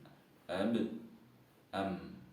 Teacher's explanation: dua buah bibir yang pertama adalah tertutup sempurna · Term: ba dan mim